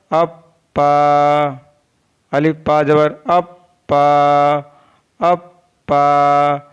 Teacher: दोनों होठों के तर हिस्से से पा अदा होता है। पा is pronounced from the वेट part of both lips.